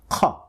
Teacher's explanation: In Arabic there is just the one sound, and that comes from the letter qaf. The letter qaf produces the sound qa, which comes from the uvula. The uvula is the part which is found at the back of the roof of your mouth. · The qa sound is produced from a connection that happens between the raised tongue, the raised end of the tongue that is making connection with the uvula, this soft spot that we just talked about. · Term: uvular sound